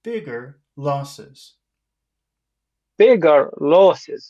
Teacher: bigger losses go up and then down